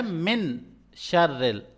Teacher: آواز کو چھپائیں گے ناک کے اندر. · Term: اخفا